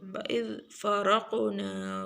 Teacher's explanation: را کو موٹا پڑھیں گے قاف کو موٹا پڑھیں گے اور قاف کے اوپر قلقلہ بھی کریں گے.